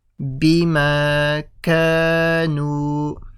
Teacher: We stretch the ma, ka and the nu. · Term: mad asli